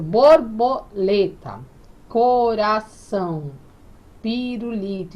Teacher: as sílabas mais fortes são lê, são e li. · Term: sílaba tônica